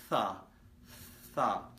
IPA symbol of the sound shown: θ